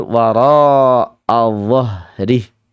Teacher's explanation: ada sebagian yang sulit membaca huruf dha. Jadinya efeknya zo.